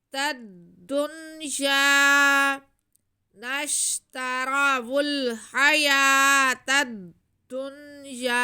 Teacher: आगे या पे ज़बर है और साथ में अलिफ है, तो ये अलिफ मद्दा हो गया, या को हम खींच लेंगे